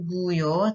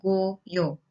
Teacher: yang membedakan itu hanya yang satu itu vokal tinggi, yang satu vokal tengah gitu kan.